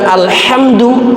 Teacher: alhamdu dengan desah dengan ha